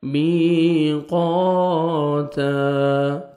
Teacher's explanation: تا کو باریک پڑھنا ہے، او نہیں پڑھنا